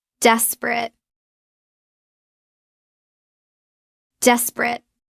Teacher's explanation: Drop the middle e. It becomes desperate. Two syllables. · Drop the middle E. It becomes desperate, 2 syllables. Note, the ending ate is pronounced it or et, not ate, so it's despre.